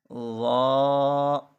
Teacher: زبان کی نوک اور دانتوں کے کناروں سے یہ ادا ہوں گے. جب زبان کی نوک دانتوں کے کناروں پر لگے گی تو یہ تین حروف ادا ہوں گے.